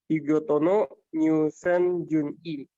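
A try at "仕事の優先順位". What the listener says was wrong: Yuseng, bukan new ya. Yuseng Jungi.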